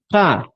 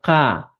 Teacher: K, más velar, un poco friccionado.